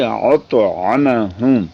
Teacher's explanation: أَطْعَمَهُمْ میں طا جو ہے وہ پر ہے